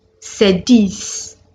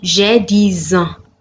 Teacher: The same X in the word 10 is pronounced Z when it precedes a vowel. That is when it comes before a vowel. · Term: liaison